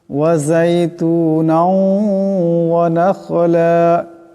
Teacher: এখানে তার নুনের উপর দুই জবরের তনবিন, এরপর ওয়া আসছে, এখানে ইদগাম হয়ে যাবে। ইদগামের একালি পরিমাণ গুণনা হবে। ওয়া নাখলা, ওয়াও জবর ওয়া, নুন খা জবর নাখ, ওয়া নাখ, লাম আলিফ দুই জবর লান, ওয়া নাখলান।